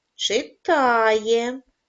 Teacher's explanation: наголос падає на звук а